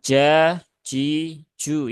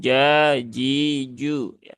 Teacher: aliran udaranya tidak ikut keluar ketika kita mengucapkan huruf Jim · huruf Jim kan dia tidak punya sifat Hames ya Dia adanya sifat jahr